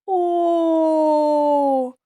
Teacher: коли ми вимовляємо звук о губи витягнуті вперед округлені зуби закриті губами язик лежить на дні ротика і не заважає проходженню повітря немає ніяких перешкоджень звук о утворюється за допомогою голосу він голосний